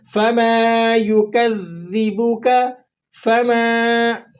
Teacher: میم الف زبر ما ہے، ایک الف تک کھینچ لیں گے